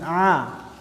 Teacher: a itu cara pengucapannya nafasnya tertahan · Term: jahar